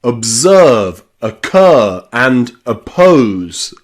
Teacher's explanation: Now, remember, the schwa sound in English is always unstressed. So the letter O, when it is not stressed, especially when it's at the beginning of words, is often a schwa in English. Think of words like observe, observe, where you've got that really fast, unstressed at the beginning.